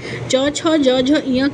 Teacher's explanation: च वर्ग की ध्वनि जो होती है फ्रेंड तालव्य से बोली जाती है